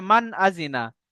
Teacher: নুন সাকিনের আওয়াজকে বিনা গণ্যায় জাহির করে পড়তে হবে। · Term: ইজহারের কায়দা